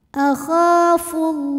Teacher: lam pada lafaz Allah dibunyikan secara tafkhim karena huruf sebelumnya berbaris damah maka dibacanya tebal